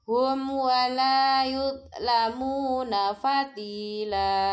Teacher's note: Faman utiya kitabahu biyaminihi faulaika yaqra'una kitabahum wa mim sukun bertemu huruf wawu. Disebut idhar syafawi. Mimnya jelas, gak boleh dengung.